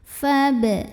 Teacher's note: Jadi artinya fa-nya ini jangan sampai dipanjangkan dulu ya. Fa-nya pendek, hamzah wasal tidak dibaca.